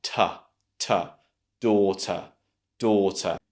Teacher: you just have the T sound and the schwa